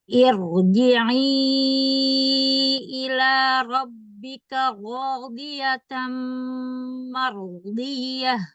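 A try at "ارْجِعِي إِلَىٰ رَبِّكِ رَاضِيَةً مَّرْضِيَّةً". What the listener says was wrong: Ro yang keduanya. Ro.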